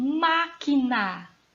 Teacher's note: assim má é a antepenúltima sílaba da palavra máquina